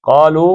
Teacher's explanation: قاف موٹا ہے، 2 حرکتیں ہیں، لو بھی 2